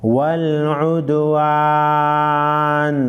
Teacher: वक़फ़ की सूरत में नून साकिन पढ़ेंगे।